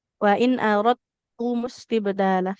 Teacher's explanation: Jadinya idgham kamil ya. Huruf dalnya dileburkan sempurna ke huruf ta'nya. Jadi sifat qalqalahnya hilang.